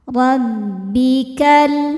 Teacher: Huruf ro dibaca secara tafhim karena ro berharakat di atas yaitu fathah. Cara bacanya ditebalkan. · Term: tafkhim